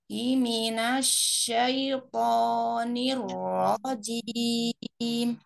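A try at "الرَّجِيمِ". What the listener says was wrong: Nirnya kak naikin. Nir lo. Nir lo. Nir rojim.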